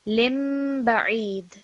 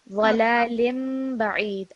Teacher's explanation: So you're not going to hear kasratain. It's going to be a meme sound. lim ba'id. And you're also going to pause for 2 seconds.